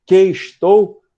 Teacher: As duas aparentes sílabas são contadas como uma só. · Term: elisão